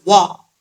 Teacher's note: واؤ کو پڑھتے وقت ہونٹ گول کریں گے، وا نہیں پڑھنا، وا.